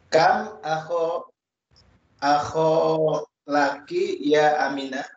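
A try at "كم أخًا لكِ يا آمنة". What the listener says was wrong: Nah, akhon laisa akho. Akhon dibaca, tanwinnya dibaca.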